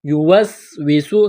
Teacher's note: الذي، یا ساکن سے پہلے زیر ہے، ایک الف کے برابر کھینچنا ہے۔ یوسوسو، سین میں سیٹی کی آواز پیدا کریں گے